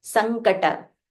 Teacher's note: Sankata, this is ng with half matra. So you will have to say ing.